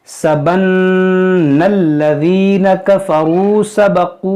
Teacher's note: नून मुशद्दद है, इसमें गुन्ना करेंगे